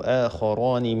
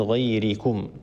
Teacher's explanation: آخران الراء مفخمة لأن الراء مفتوحة، وغيركم الراء مرققة لأن الراء مكسورة